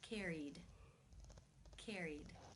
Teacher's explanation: The final sound in the infinitive is the E as in she vowel sound. Since it is a vowel, it must be case 2, where the ed is pronounced as the D sound.